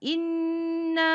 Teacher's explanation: nun syaddah. Wajib dengung sebanyak 2 harkat. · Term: wajib al-ghunnah